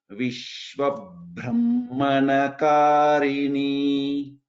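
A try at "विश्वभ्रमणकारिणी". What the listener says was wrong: Vishwabhramanakarini. Vishwabhramanakarini, Brahmanakarini. This plain Brahma is not there. Vishwabhramanakarini.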